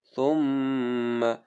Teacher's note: یہاں پر میم پہ ہم غنہ کریں گے